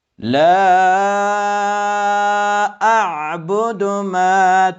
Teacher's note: عین متوجه باشید که از وسط حلق ادا کنید چون از جمله حروف حلقی است